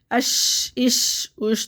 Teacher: تفشی ہوگی یعنی کہ منہ میں آواز پھیلے گی